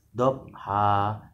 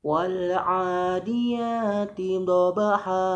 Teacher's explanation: Tidak boleh dhabha, harus ada pantulannya, dipantulkan, harus ada getaran atau guncangannya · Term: qalqalah